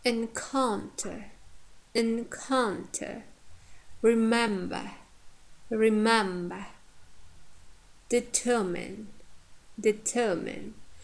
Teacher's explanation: here we have full vowels or long vowels in the second syllable, in the penultimate syllable, yeah, second from the end, and therefore here stress falls on the second syllable, encounter, because our third syllable contains short vowels or schwa.